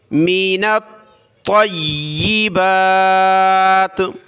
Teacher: طا اور یا دونوں کو سخت کرنا ہے